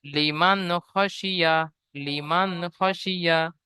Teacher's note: নুনের উপরে সাকিন এসেছে, নুন সাকিনের পরে হরুফে হালকি ছয়টির মধ্য থেকে খ এসেছে, তাই নুন সাকিনের আওয়াজকে বিনা গুণনায় জাহির করে পড়তে হবে।